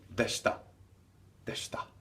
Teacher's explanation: Whenever there's an accent before the short vowel e, the short vowel e really drops away, and you just hear the sh consonant sounds in this case.